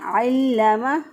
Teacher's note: आइन के ऊपर ज़बर है तो आइन को वस्ते हलक से अदा किया। अल्लमा। लाम को मजबूत है क़ो से पढ़ा क्योंकि इसके ऊपर शद है।